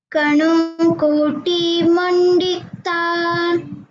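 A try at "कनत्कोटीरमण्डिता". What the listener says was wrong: Koti R is there. You missed the R. Kanat Kotira Mandita. Kanat. The T is also there. One T half is there.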